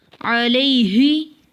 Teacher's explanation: یا ساکن ہے پچھلے حرف پہ زبر ہے تو یا لین کو نرمی سے ادا کرتے ہیں۔